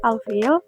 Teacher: Hukum tajwidnya alqamariyah ithar kamariyah. Karena lam sukun bertemu huruf fa, huruf lam dibaca jelas, tidak dilebur.